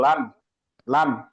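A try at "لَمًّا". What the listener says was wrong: ইয়েন হলে লান হয়, আর এখানে লাম থেকে এল হয়। লাম লাম জবর লাল, এল এ এল লাল। তাজদিদ গুন্না করেন। গুন্না করতে হবে। লাম মিম জবর লাম।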